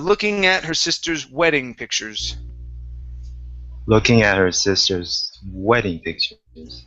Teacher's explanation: we want to stress wedding